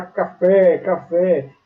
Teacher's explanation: a sílaba tônica está na última sílaba, é oxítona